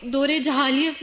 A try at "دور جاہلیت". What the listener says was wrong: یہ لفظ جاہلیت ہے، جہالیت نہیں ہوتا، سب اپنا پروننسیشن ٹھیک کر لیں، کیونکہ ہم بہت سے لفظ کتابوں سے جب پڑھتے ہیں تو صحیح نہیں پڑھتے۔ دور جاہلیت، ٹھیک ہے، پھر پڑھیے آپ۔